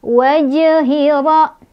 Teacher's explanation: Ra-nya dibaca secara tafkhim karena ra-nya berbaris fathah. Cara bacanya ditebalkan. Rabbi ditekan.